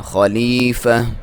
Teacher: جب اس وقف کرتے ہیں تو اس کو آپ ہا میں کنورٹ کر دیتے ہیں